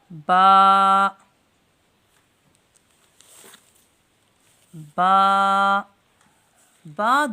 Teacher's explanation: الف با با با دونوں ہونٹوں کی اندرونی تری کے ملنے سے ادا ہوتا ہے۔